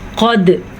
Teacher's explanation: क़द क़ाफ को मोटा पढ़ना है, दाल पे कलकला करना है। दाल हरूफ़े कलकला में से है।